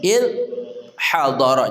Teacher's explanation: tahan di ujung lidah bersama ujung gigi serri atas kita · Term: tanpa qalqalah